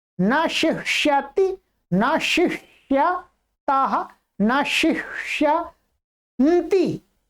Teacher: यहां तालव्य शकार, फिर मूर्धन्य शकार, दो प्रकार के शकारों का उच्चारण करना।